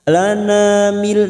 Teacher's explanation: nun sukun bertemu lam, idgham bila gunnah. Masuk pada huruf lam tanpa mendengung, tanpa ditekan lama-lama, hanya masuk.